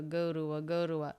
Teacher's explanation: we often reduce the vowel in the word to, but he doesn't do that here. He keeps it a oo vowel. We usually reduce it to the schwa.